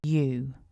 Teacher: Syllable 1 begins with the y sound, and then we have a long oo vowel.